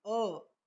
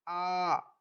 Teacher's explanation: तो इसमें अ से ज्यादा समय आ बोलने में लगा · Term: दीर्घ स्वर